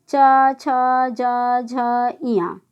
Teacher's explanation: च वर्ण का उच्चारण जब करते हैं तो तालु, जीभ हमारी तालु को छूती है।